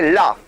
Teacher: ला जब हम बगल से करते हैं तो बगल से सांसे निकलती हैं। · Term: पार्श्वक व्यंजन